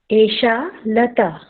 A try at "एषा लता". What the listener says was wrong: एषा लता, थोड़ा सा लंबा बोलना है, एषा लता।